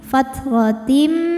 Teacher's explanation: Karena tanwin menghadapi huruf mim, maka tanwin lebur ke mim. Fathratim disertai bunyi dengung, tahan. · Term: idgham bi gunnah